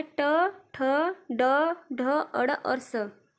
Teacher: मूर्धन्य व्यंजन वह व्यंजन होता है जो कठोर तालु के मध्य का भाग मूर्धा कहलाता है। जब जिह्वा की उल्टी हुई नोक का निचला भाग मूर्धा से स्पर्श करता है, ऐसी स्थिति में उत्पन्न ध्वनि को ही मूर्धन्य ध्वनि कहते हैं।